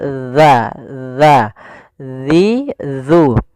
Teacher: Makhraj huruf zal itu dari ujung lidah kita, ujung lidah menempel dengan gigi dari atas kita.